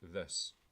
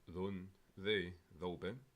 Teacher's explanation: the voiced dental fricative, such as the first sound in English, this